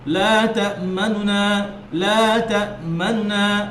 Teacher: তো লা তা'মানুনার প্রথম যে নুন, সেই নুনটাকে দ্রুত পড়া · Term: ইখতিলাস